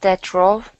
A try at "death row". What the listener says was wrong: Make sure you pronounce that TH in death. Death row.